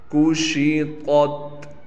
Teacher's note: काफ को बिल्कुल बारीक पढ़ना है, शीन को साफ़ करके उसकी आवाज़ को साफ़ निकालना है। ता को मोटा पढ़ना है और ता के साथ ता है।